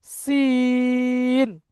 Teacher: সিন আর শিন, এই সিনটা একটু সিটি টাইপের উচ্চারণ হবে। জিভের আগা এবং সামনের উপরের দাঁত এবং নিচের দাঁতের আগার সাথে লেগে উচ্চারণ হবে।